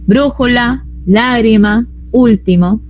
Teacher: las esdrújulas, que son las que tenían la mayor fuerza de voz en la antepenúltima sílaba